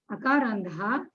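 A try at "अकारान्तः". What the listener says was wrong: Akarantaha. Taha, not Daha. Akarantaha. You're doing the same mistake. You're saying akarandaha, akarandaha, akarantaha. Ta, it is the first letter of the fourth class. Ta, tha, dha, dha, na. Ta, not the. Akarandaha means it looks as a third letter. When I hear the pronunciation. Akarantaha.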